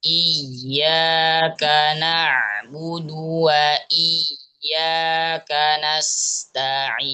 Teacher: قلنا ألا نشدد الياء مع سكونها